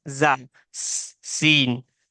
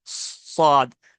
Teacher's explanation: जा और सीन ये लाइट है, और स्वाद हेवी है। तो इसको पढ़ते वक्त इसे मोटा पढ़ेंगे, पुर पढ़ेंगे, ठीक है।